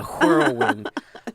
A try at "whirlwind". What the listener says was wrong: you're pronouncing the H in world